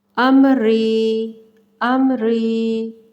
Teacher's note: कोई गुन्ना कोई इख्फा कुछ भी नहीं हो रहा, नॉर्मल सादा सादा इजहार होगा